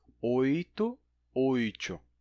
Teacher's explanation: Em oito temos uma palatalização progressiva. O i influencia a consoante que vem depois